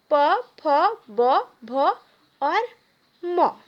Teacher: पवर्ग का उच्चारण स्थान है ओठ यानी होठ।